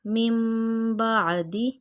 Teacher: یہاں اقلاب کریں گے، من بعد، من کی بجائے میم پڑھیں گے،